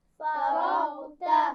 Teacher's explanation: را اور غین موٹے ہیں لیکن تا کو باریک پڑھیں گے